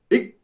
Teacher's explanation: அடி நாக்கு அடி எண்ணத்தை தொட்டு காற்றை மார்பிலிருந்து வெளியிட்டால் இக் என்ற ஒளி பிறக்கும்